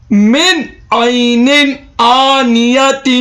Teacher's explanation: نون ساکن کے بعد اظہار کے 6 حرفوں میں سے عین آ رہا ہے، اس لیے بغیر گنہ کے تلاوت کریں گے۔ 2 زیر تنوین کے بعد حروف حلقی کے 6 حرفوں میں سے حمزہ آ رہا ہے، اس لیے بغیر گنہ کے تلاوت کریں گے۔